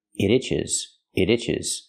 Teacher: You hear the T and it pronounces a fast D. · When I link the sounds and say it together, it itches, it itches. You hear the T in it pronounced as a fast D.